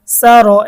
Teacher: তো এখানে রয়ের উপরে জবর বা পেশ হইলে র মোটা, তো এখানে রয়ের উপরে জবর, এজন্য রটা মোটা হবে।